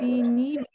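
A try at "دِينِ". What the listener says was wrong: ہاں, اب ہم یہاں پہ جب دینی پڑھیں گے تو نون کے نیچے صرف کسرہ کر کے پڑھیں گے, یا کو لمبا نہیں اس کو کریں گے, اس کو ہم ایسے نہیں پڑھیں گے دینی نہیں, کیونکہ یہاں پہ یا موجود نہیں ہے.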